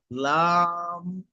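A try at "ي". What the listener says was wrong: লাম নয়, ইয়া, হা। নিচে 2 নোক্তা হলে ইয়া বলা হয়।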